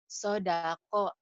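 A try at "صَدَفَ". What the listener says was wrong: Ini sodafa. Ini kan fa tadi kau baca. Jangan ketuker ya. Kalau titik satu nih yang atas ini fa. Kalau titik dua kof.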